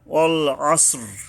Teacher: আইন গলা চেপে আদায় করতে হবে